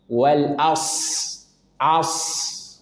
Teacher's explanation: As, tebal. Kemudian karena sad punya sifat rokhawah, maka alirkan dahulu.